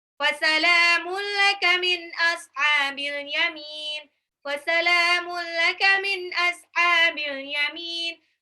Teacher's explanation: Fasalamun lamnya mad tabi'i 2 harokat